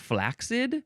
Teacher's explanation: people also like to say flaccid with a K sound